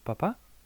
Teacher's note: el acento está en la segunda A